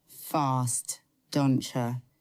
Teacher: The T and Y blend together and become a CH sound. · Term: assimilation